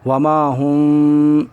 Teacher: ہا میم پیش ہم، میم ساکن کے بعد با آ رہا ہے اس لیے یہاں پر اخفاء شفوی ہوگا، یعنی وما ہم بمؤمنین، دونوں ہونٹ سٹ کر اور بھنبھناہٹ کے ساتھ آواز نکلے گی. وما ہم، ناک میں آواز چھپ کر نکلے گی